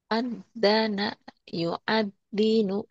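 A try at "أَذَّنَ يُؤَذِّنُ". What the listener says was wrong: Dalnya agak rapuh ya. Azzana dalal. Heeh. Kayak ujung lidah ke ujung gigi.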